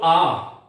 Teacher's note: आ जब हम बोलते हैं तब निश्चित रूप से हमारा जो औष्ठ है वो गोल नहीं होता, आ गोल नहीं हो रहा। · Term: अवर्तुलित